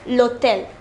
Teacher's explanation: Here, the word begins with H, which is not a vowel. However, it is pronounced hotel. The H here is silent. This is called a H mute.